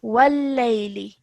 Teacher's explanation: the lam has a shadda, so you're joining the waw to the lam mushaddad with force.